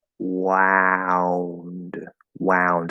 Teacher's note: the ow diphthong also ends in a similar position to the W. But you have to open more into ah first.